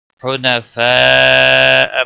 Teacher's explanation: مد متصل ہے، 5 الف کے برابر کھینچ کر پڑھیں گے